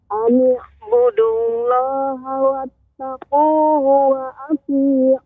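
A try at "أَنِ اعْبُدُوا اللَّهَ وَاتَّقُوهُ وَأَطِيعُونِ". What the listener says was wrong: Ya, budu, dal, pengucapan da ini dengan punggung ujung lidah. Dia ujung namun punggung. Adapun budu, nah ini ujung, bukan benar-benar ujung lidah tepi, ujung. Nah, budu, nah ini kurang tepat, namun lebih di atasnya lagi budu. Ani'budullaha wattaquhu wa ati'un.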